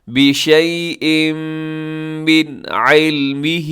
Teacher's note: یہاں ادغام بھی ہو رہا ہے کیونکہ بشیء کے نیچے تنوین ہے، اور تنوین کے بعد میم یرملون کا ادغام کیجیے گا یہاں پہ غنے کے ساتھ